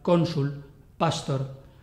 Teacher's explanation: sílabas son llanas en latín no hay palabras agudas así que llevan el acento tónico en la penúltima sílaba